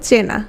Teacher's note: হওয়া উচিত ছিল চীনা, কিন্তু চীনা না হয়ে যে চেনা হয়ে গেল, তাহলে ই ধ্বনি থেকে কোন ধ্বনিতে চলে গেল? এ ধ্বনিতে পরিণত হলো। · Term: গুণ